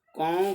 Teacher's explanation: कौ का उच्चारण करें तो ध्वनि नाक और मुंह दोनों से निकलती है